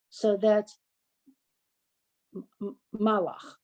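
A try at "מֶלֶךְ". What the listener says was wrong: No, what's the first vowel? Melech.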